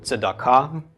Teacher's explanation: Then we have the a, the a of the komets, the k of the kuf, the a of the komets, and the hey at the end is silent